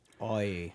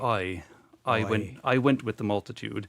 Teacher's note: he tells us that it starts in the back of the mouth, more of an oi. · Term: long I sound